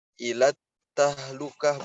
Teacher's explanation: Jadi alif lamnya tidak dibaca. Contohnya, ilat tahlukah, bukan ilal tahlukah, tapi langsung masuk ke ta. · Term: alif lam syamsiyah